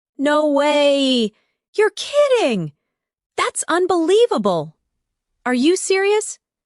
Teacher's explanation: Try saying them with emotion. Feel the rise in your voice when you express surprise.